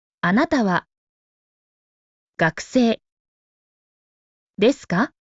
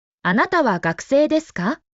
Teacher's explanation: just like a statement and lift it up at the end